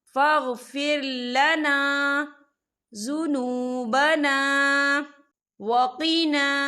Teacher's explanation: یہاں بھی الف مدہ ہو رہا ہے، خال الف سے پہلے زبر ہے، تو ہم یہاں 2 یا 3 حرکت کے برابر کھینچیں گے۔